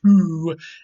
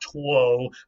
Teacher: with the Great Vowel shift, the O became an oo sound, and that's why we say tu and not tuo.